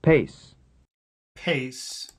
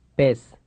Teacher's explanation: The Spanish P is always produced without aspiration.